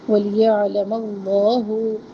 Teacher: لام اسم کو موٹا پڑھنا ہے